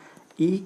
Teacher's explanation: ई का भी उच्चारण स्थान क्या है तालू है